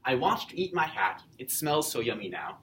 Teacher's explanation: this poem is iambic trimeter, because every second syllable is the stressed syllable, and there are 3 feet per line.